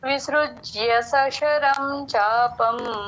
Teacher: వక్రసుడి ఎప్పుడు వచ్చినా తేల్చి చెప్పాలి ఆ ఋ అనేది వక్రసుడి విసృజ్య అనాలి సశరం శశరం అనొద్దు స శ క్లియర్ గా డిఫరెన్స్ గా వినబడాలి